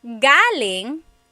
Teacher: galing, the emphasis is on the first syllable that means coming from